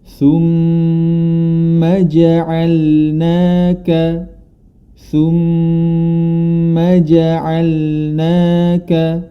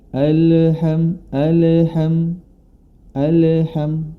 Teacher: memiliki sifat tawasut yakni di antara sifat rahwah dan syiddah artinya pertengahan dia tidak tertekan suaranya tidak tertekan juga suaranya tidak terlepas